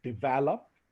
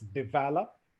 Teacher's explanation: The correct pronunciation is develop. There's a stress on the second syllable.